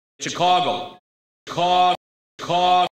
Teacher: the city's name was traditionally pronounced with the THOUGHT vowel in its stressed syllable.